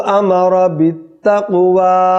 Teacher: قاف پر کیا ہے؟ قلقلہ، کیونکہ یہ ساکن ہے